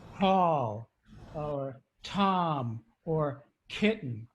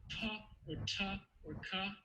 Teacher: the english p t and k all have a little puff of air